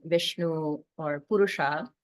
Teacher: the Sha is pronounced like a hissing s sound but with the tongue curled up and pointing pointing up so the the point of the tongue the tip of the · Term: retroflex Sha, retroflexed sha